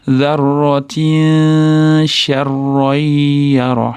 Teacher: Zarratin mana tayda qing'ir chiziq, ya'ni ikkita kasrali tanvin kelyapti. Sh harfiga yo'liqqan uchun ixfo qilib shni chiqadigan joyiga nunni yashiramiz.